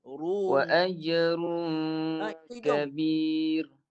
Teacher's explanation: Bunyi ru dulu baru tolak ke hidung. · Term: dua bunyi